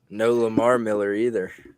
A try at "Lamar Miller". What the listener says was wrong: Yeah, you put that emphasis on the wrong word. Yeah, Lamar Miller.